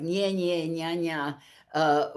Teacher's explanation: the baby was just producing two syllables with a repeated nasal onset